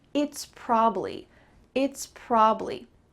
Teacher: What about this word probably? Well, in fast English, we're going to cut out that middle sound and just have two syllables